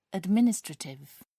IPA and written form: ədˈmɪnɪstrətɪv (administrative)